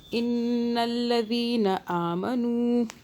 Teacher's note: इन नून मुशद्दद आ रहा है, 2 सेकंड के लिए गुन्ना करें